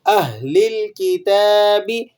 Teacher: تا پر کھڑا زبر ہے، اسے آپ 1 الف کے برابر کھینچ لیں گے